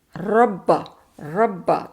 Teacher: रब इसमें देखें मोटा भी है पुर है बिल्कुल और अगर इसी के साथ हम दूसरा देखें कि अगर शदा वाला आए तो हम कह देंगे रब्बा रब्बा तो थरथराहट भी है थोड़ी सी